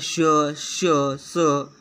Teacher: मुखवाटे जोराने उसासा बाहेर टाकल्याप्रमाणे या वर्णांचा उच्चार होतो. यात घर्षण आहे. घर्षणामुळे उष्णता निर्माण होते, म्हणून यांना उष्मे म्हणतात. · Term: घर्षक